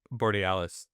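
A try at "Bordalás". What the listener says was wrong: Bordalas. added a vowel on me.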